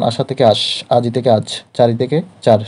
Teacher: শব্দের শেষে বা অন্তে স্বরধ্বনি লোপ পেয়ে যায় হারিয়ে যায় বা থাকে না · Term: অন্তঃস্বরলোপ